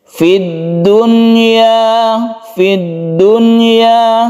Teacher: kita membaca izhar tersebut dengan cara nun mati dibaca jelas dan tidak berdengung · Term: izhar wajib